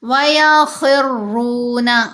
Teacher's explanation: خا کو موٹا پڑھنا ہے، حروف مستعلیہ میں سے ہے. وَيَخِرُّونَ، اور را کو بھی موٹا پڑھیں گے، اوپر پیش ہے، را کے اوپر جب زبر ہو یا پیش ہو تو را کو موٹا پڑھتے ہیں، اور را کے نیچے زیر ہو تو را کو باریک پڑھتے ہیں.